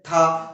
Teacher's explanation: तो जो जीभ है हमारी वो दांतों पर स्पर्श होगी, इसलिए ये इसको बोलते हैं दंत व्यंजन।